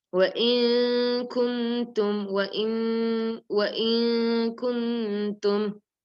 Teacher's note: You can see the letter kaf is ikhfa letter. So you have to hide the noon with gunna.